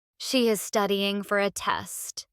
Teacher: Stress studying and test.